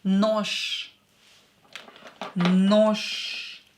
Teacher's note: Ж is a voiced consonant. Because it is located at the end of the word, we will make it unvoiced. It will become unvoiced.